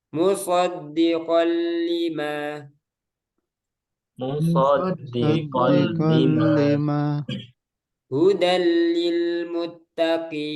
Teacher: jadi tanwinnya enggak dibaca lagi nunnya juga gak dibaca lagi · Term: Idam Kamil